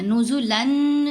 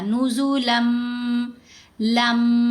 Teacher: نزولن نہیں پڑھا گیا، نزولم، لم، بات کی سمجھ جائے، لم، نون سائلنٹ ہو گیا، صرف غنہ کی مقدار یہاں صفت باقی رہی۔ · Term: ادغام